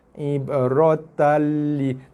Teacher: Idgham masuk bila tanpa gunnah dengung, tanpa dengung, kamil sebab ada sabdu. So tekan habis pada lam. · Lam ada sabdu, maksudnya idgham kamil, tapi dia bukan ma'al gunnah. Dia bila tanpa gunnah dengung.